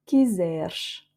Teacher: Quiseres, on a le premier E qui est tonique sans accent, donc est ouvert, et le dernier E entre le R et le S ne se prononce pas